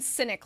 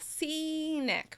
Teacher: Cynic is a little more closed, and it has to do with your mouth is actually more relaxed, whereas with scenic, your mouth moves more.